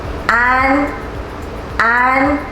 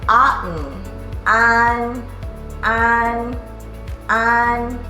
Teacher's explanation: I would say think of the spelling of AHN, the ah sound, like in car or ah, but end it with an N sound, like an. You might need to practice a few times, but you'll get it.